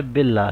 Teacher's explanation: تشدید والا لام جس لیٹر کے ساتھ کنیکٹ ہو رہا ہے تو اس کے نیچے سائن ہے، کسرہ ہے، تو اس لیے اس کو ہم باریک پڑھیں گے، اس کو ہم لائٹ پڑھیں گے، بولڈ نہیں کریں گے.